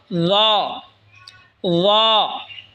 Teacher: ল। ল জিহ্বার আগা সামনের ওপরের দুই দাঁতের আগার সঙ্গে লাগায় উচ্চারণ হবে ল